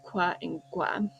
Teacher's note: And in sets 7 and 8, you have the labialized velars qua and gua.